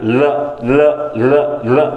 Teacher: जब आप ल का उच्चारण करते हैं तो जीभ आगे आके अवरोध उत्पन्न करती है, जिससे हवा जो होती है वो दोनों साइडों से होकर निकलती है, दोनों साइडों से, मुंह के अगल बगल से निकलती है। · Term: पार्श्विक व्यंजन